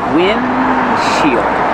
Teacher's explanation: You make the position of the D, but don't release D. Just windshield. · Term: stop D